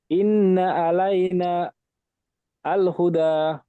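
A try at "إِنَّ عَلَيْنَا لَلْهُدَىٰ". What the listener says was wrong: আল বলছেন, আল লাল। তো এখানে নুনে একালি টান দিয়ে বলবেন, নুনে টান ছেড়ে গিয়েছে।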